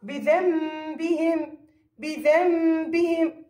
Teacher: مع وجود غنة. هذه الغنة مقدار حركتين، مقدار حركتين · حروف الإقلاب، اللي هو حرف واحد للإقلاب. نون ساكنة زائد باء، يعني جاء بعدها باء، ماذا تساوي؟ تساوي ميم. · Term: إقلاب حقيقي